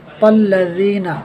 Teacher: ذال پہ زبان آپ نے دانتوں سے لگانی ہے